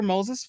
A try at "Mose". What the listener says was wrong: Everybody wants to add another S.